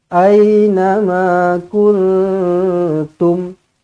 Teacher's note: Nun kosong bertemu dengan ta, ikhfa hakiki, dengungkan dua harakat.